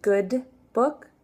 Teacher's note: we don't want to release the D